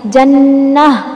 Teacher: وقف میں تا کو ہا بنا دیا اور اس ہا کی آواز سینے کی طرف سے آنی ہے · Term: ہائے ساکنہ